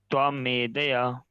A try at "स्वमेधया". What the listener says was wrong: अरे त्वा क्यों बोल रहा हूँ, मैं बोल रहा हूँ स्व। स्व अपना जो होता है ना उसको बोलते हैं स्वमेधया।